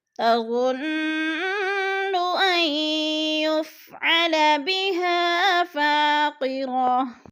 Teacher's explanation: بها پہ الف مدہ ہے، الف مدہ کو ایک الف دو حرکات کے برابر ہم نے کھینچ کر پڑھنا ہے